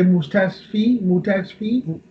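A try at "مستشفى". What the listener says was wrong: Mustashfa is a word which doesn't require kasra at the end. So you can say mustashfa.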